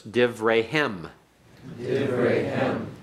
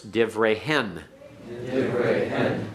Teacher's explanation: where the accent has to be placed on the suffix, which is on kem, ken, hem, hen. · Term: heavy suffixes